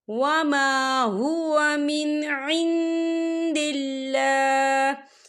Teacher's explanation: نون ساکن کی آواز کو ناک میں چھپائیں گے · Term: اقفا